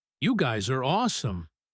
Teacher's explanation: The stress is on awesome.